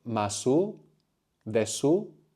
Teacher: the silent u of su will come out with the intonation of a question